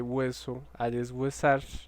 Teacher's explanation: hay un cambio en la tonicidad de la sílaba que tiene un diptongo en hueso pero en este caso no se da el cambio